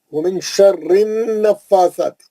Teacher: نون پہ غنہ کریں گے، فا پہ کھڑا زبر پڑھیں گے 2 حرکت، سا پہ کھڑا زبر پڑھیں گے 2 حرکت.